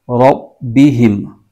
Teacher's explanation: با پر تشدید ہے، یہ حروف قلقلہ کا حرف ہے اور اس کو جما کے پڑھیں گے